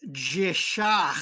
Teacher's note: we have that h again which is capitalized to remind us make it a raspy h